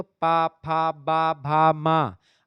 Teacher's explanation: तो आपका जो दोनों ओठ होता है दोनों लिप्स आपस में चिपक जाते हैं